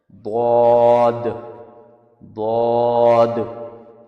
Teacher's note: بود کا ساؤنڈ ٹنگ کے سائڈ سے نکلتا ہے اور ٹیتھ کے پاس ٹچ ہوتا ہے. بود ایک وائس فیرنجیل ساؤنڈ ہے. یہ ساؤنڈ ہیوی اور تھوڑا نیزل ہوتا ہے. اس میں ٹنگ اور دانتوں کے بیچ کانٹیکٹ ہوتا ہے.